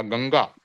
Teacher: गंगा जो उच्चारण होगा नाक से नाक से निकलेगा ग के ऊपर जो अनुस्वार है ना उसका नाक से निकलेगा